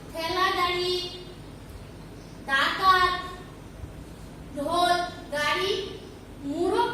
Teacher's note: দন্তমূল এবং তালুর মাঝখানে যে উঁচু অংশ থাকে তার নাম মূর্ধা। যেসব ব্যঞ্জনধ্বনি উচ্চারণের সময় জিভের ডগায় মূর্ধার সঙ্গে লেগে বায়ুপথে বাধা সৃষ্টি হয় সেগুলোকে মূর্ধন্য ব্যঞ্জন বলে।